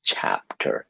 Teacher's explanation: when you say chapter, you're using stress in the first part, chapter. If you say chapter, the listener will look at you and think, what?